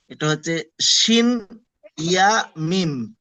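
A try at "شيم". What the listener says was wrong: মাশাআল্লাহ। আচ্ছা তারপরেরটা পড়েন।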